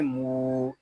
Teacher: ناک میں آواز نہیں جانی چاہیے